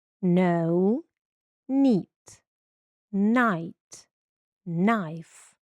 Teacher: K звука не дає. KN звук Н.